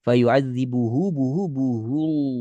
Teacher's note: Yang pertama tuh lamnya tebal, lam sukun ya, tebal.